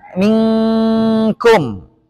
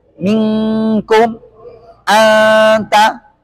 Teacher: huruf nun yang diikhfakan. Seperti kata minkum. Nunnya kan nggak nampak. Kalau nampak dia izhar.